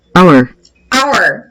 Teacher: Então, eu quero falar uma hora qualquer do dia, an hour. Mesmo que a letra H seja uma consoante, que a palavra comece de forma escrita com uma consoante, mas o som que prevalece primeiro é o som de vogal.